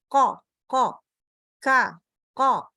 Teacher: Ingat, ko, bukan ko. Jadi dia menaikkan pangkal lidah, ko, ka, ko. Tetap di situ tuh. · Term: dinaikkan pangkal lidah